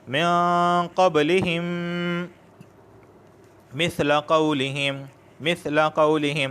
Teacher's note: میم ساکین کے بعد ایک اور میم آیا ہے، تو ادغام شفوی مع الغنہ، کہ ادغام بھی ہوگا اور غنہ بھی ہوگا